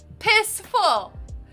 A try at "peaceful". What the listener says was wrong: Pissful. Piss. think it was the way you said peaceful. It's like pissful. It's like you said it with the accent and it sounded like pissful.